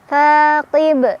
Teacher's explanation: Ta mad tabi'i karena ada alif sebelumnya fathah, dibaca panjang 2 harokat.